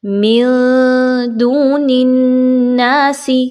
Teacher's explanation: next من دون الناس، اب یہاں پہ نون ساکن کے بعد دال ہے تو ہم یہاں پہ اخفا کریں گے، نون کی آواز کو کلیئر نہیں پڑھنا، چھپانا ہے